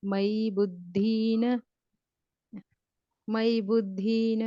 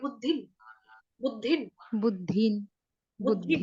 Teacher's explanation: बुद्धिन में आपने मात्रा लंबी कर दी है, दीर्घ कर दिया। बड़ी मात्रा नहीं, छोटी है